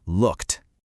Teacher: So it's a voiceless sound, which means we use the voiceless T ending. Looked. Okay, how about this next one?